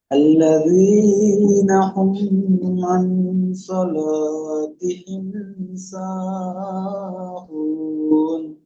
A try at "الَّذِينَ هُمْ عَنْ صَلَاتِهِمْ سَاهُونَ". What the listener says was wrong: এখানে আল্লাযীনা হুম বলে গুণনা করছেন, মিম সাকিন আছে। আমরা পড়েছিলাম মিম সাকিনের তিনটি কায়দা: এক নম্বর ইকফায় স্বাভাবিক, দুই নম্বর ইজহারের ইদগামের স্বাভাবিক, তিন নম্বর ইজহারের স্বাভাবিক। তো ইজহারের স্বাভাবিক কখন হবে?